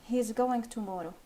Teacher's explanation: The Melody of the sentence as you said it drops at the end making it a statement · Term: falling intonation